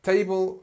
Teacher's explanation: Table, it's pushed on the first one, and on the second one you've got this other schwa